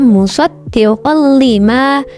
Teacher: Di sini ada fathah tanwin di qaf yang bertemu dengan lam. Maka suara fathah tanwin dileburkan atau dimasukkan ke dalam huruf lam. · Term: idgham bila gunnah